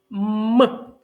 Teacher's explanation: при вимові цього звука струмінь повітря що виходить із ротика зустрічає перешкоди із губ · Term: звук м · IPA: [м]